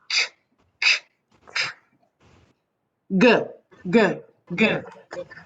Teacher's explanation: now we're pressing the back of our tongue up against the back palate of the mouth. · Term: popper